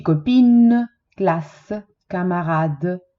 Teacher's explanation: Esempi, copine, classe, camarade, sono tutte parole che finiscono con una E muta, vale a dire non si sente la E, ma si sente la lettera che viene prima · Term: E muet